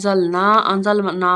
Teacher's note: زبر نون دال زبر را زر زال کو نرم پڑھیں گے نون کی آواز کو ہم چھپائیں گے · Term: اخفا